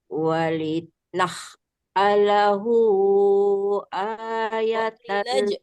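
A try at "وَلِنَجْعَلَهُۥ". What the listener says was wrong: jim bukan dibaca ha. Walinaja'alahu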